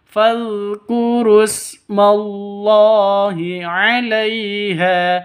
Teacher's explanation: Allahi lafdul jalalah ada di tengah, panjang hanya 2 ketukan, mad asli